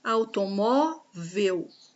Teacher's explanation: O mó é a penúltima sílaba, é a mais forte, é a sílaba tônica dessa palavra, então automóvel é uma palavra classificada como paroxítona.